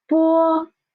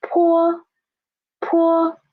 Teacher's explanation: For po you can feel the air is soft but for poor poor the air is much stronger stronger. And for po and poor, please pay attention to the the lips.